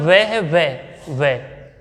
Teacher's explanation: वह को बोलते समय वह, ध्यान रखना वह का, वह को बोलते समय हमारी जीभ की नोक दांतों को स्पर्श करती है, ऊपर वाले को, लेकिन उसके साथ साथ होंठ भी कैसे हो जाते हैं, गोल हो जाते हैं। दंत्योष्ट बोला है, उसे क्या बोला, दंत्योष्ट।